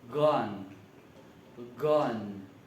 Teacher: Jadi terdapat udara yang keluar melalui mulut kita dan akan terasa sebuah letupan.